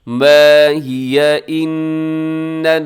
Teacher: نون مشدد ہے یہاں غنہ ہوگا